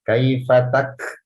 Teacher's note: penyebutan huruf kaf sukun, jangan sampai terdengar seperti pantulan.